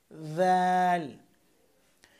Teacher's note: দাল উচ্চারণ করবেন জিহ্বার আগা উপরের দাঁতের আগার সাথে লাগিয়ে